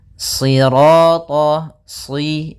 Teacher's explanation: Sirata, si, sambil pangkal lidah kita karena shad itu pangkal lidah kita terangkat dan melekat karena dia huruf idbaq. Sira, kemudian ro-nya ro tafkhim.